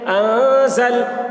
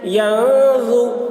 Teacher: نون ساکن کے بعد حروف اخفا میں سے ظا آ رہا ہے، اس لیے نون کی آواز کو ناک میں چھپا کر پڑھیں گے، اس کو اخفا کہتے ہیں